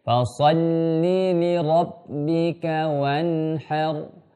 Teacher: Kemudian yang nun ketemu dengan ha, ini adalah izhar, tapi jangan sampai menghilangkan sifat ghunna aslinya. Fasalli li rabbika wanhar, bukan wanhar, bukan ketus ya.